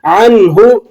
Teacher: نون ساکن ہے اور آگے حروف حلقی میں سے ہا آ گیا ہے، تو یہاں آپ غنہ نہیں بلکہ اظہار کریں گے۔